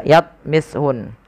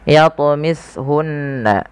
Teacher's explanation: ada bacaan qalqalah, wajib kita pantulkan lafal huruf ta. Jangan dibaca yatmishun, tapi harus memantul.